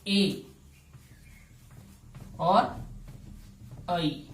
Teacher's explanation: कंठ तालु के द्वारा ए और ऐ का उच्चारण होगा।